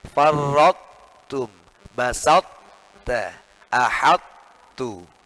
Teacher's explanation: Jadi bacanya sifat isti'la'nya ta itu tidak boleh hilang. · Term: idgham naqis